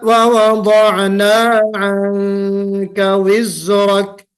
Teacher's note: शुरू वाला में जो बारीक हो रहा है और दूसरे वाला में मोटा हो रहा है। शुरू वाले इख्फा में इख्फाए तरकीक यानी बारीक इख्फा हो रहा है, यानी मेरी जुबान ऊपर नहीं बल्कि नीचे ही रह रही है। मेरी जुबान ऊपर नहीं चढ़ रही बल्कि नीचे हो रही है, इस्तिफाल की सिफत।